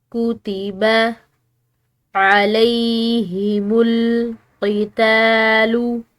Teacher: عین حلق سے ادا کریں گے، اور لام کے بعد جو ہے یہ یا ساکن آ رہی ہے تو اس کی وجہ سے اس لام کو ہم نے ایک الف کے برابر لمبا ادا کرنا ہے۔